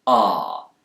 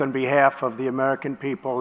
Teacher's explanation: British speakers, especially those in the south of England, will use a more back vowel sound here, ah, but Americans will tend to use a more front vowel sound. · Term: Bath vowel